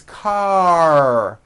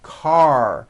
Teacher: ending with an a vowel but it's not C it's car your tongue has to pull back car and also your lips close a little bit in the front the r needs to be very strong and you need to